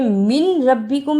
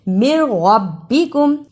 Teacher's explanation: مِن رَبِّکم، اسے من ربکم نہیں پڑھنا، میم زیر را مر، یہاں نون کی آواز بالکل نہیں نکالنی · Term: ادغام بلا غنہ